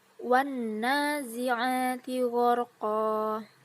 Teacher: Pada ayat ini terdapat alif lam samsiyah, yaitu di mana alif lam tidak dibaca tapi melebur kepada huruf berikutnya